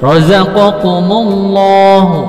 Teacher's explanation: Untuk lafaz Allah ini ada 2, ada lam tafkhim, ada lam tarqiq. Lam tafkhim apabila sebelum lafaz Allah berharakat fathah atau dhammah atau harakatnya adakannya di atas, maka dipertebal Allahnya.